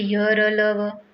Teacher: ये एक झटके से ही वर्ण निकलते हैं। जैसे देखिए य र ल व। श्वास का अवरोध बहुत ही कम होता है। ये वर्ण स्वर और व्यंजन के बीच की स्थिति है। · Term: अंतस्थ व्यंजन